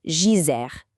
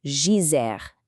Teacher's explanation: It's actually not a hard D sound at all. It's much softer, more like a J.